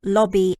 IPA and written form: ˈlɒbi (lobby)